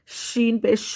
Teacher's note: اس میں تفشی ہوگی، آواز منہ کے اندر پھیلے گی.